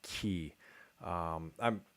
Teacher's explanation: a K before front vowels is a little bit, you know, a little affricated. So you get like ki.